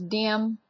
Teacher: the Cajuns and South Louisiana put a lot of emphasis on the D's in their words, like, especially at the beginning of words